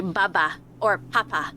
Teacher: B and P's are bilabials. They're created on the mouth, lips.